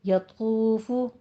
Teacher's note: तो को पुर पढ़ना है, फा के ऊपर भी जम्मा है, पेश है, होंठ गोल कीजिए